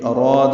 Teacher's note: را پر الف مدہ ہے، 2 حرکات لمبا ہے